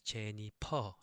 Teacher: So no F sound in Korean. So it's Jennifer, like the P sound.